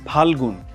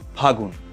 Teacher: পদের মধ্যে যদি কোনো ব্যঞ্জনধ্বনি লোপ পায় সেটাকে আমরা বলবো অন্তর্হতি